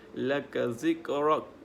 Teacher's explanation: jadi kaf ni huruf qalqalah, jadi kena ada hentakanlah sikit.